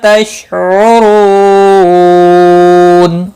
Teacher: تشعرو، رو واو مدہ ہے، 1 الف کے برابر کھینچ کر پڑھیں گے، نون وقف کی صورت میں نون ساکن پڑھا جائے گا، وقف بالاسکان ہوگا۔ مد العارض وقفی ہوگا، 3 سے 5 الف کے برابر کھینچ کر وقف کریں گے